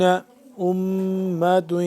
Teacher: امۃ میم مشدد پہ ہم غنہ کریں گے